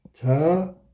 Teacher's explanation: 비읍하고 히읗하고 합쳐져서 피읍이 된 거야. 그럼 당연히 이건 축약이지. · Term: 자음 축약